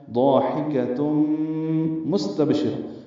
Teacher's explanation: ہا وسط حلق سے ادا کریں گے